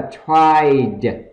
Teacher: âm thi bật hơi ra